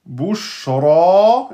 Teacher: ra fatha emphatique suivi de alif maksoura donc deux temps Bouchra, et non pas bouchre, c'est pas re, c'est ra, bouchra.